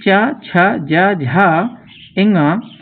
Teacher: तो चा, छा, जा इनका उच्चारण स्थान होता है तालु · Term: तालव्य वर्ण